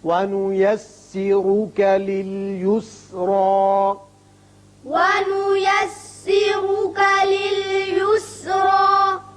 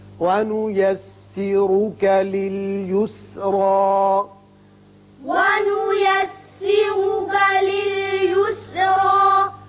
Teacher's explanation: اسرا کے اوپر پیش ہے اور اس کے اوپر کھڑا زبر ہے، دونوں جگہ را پر پڑھیں گے